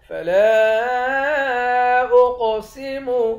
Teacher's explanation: لام کے بعد الف ہے، اس الف کو تین الف کے مقدار کھینچ کر پڑھیں گے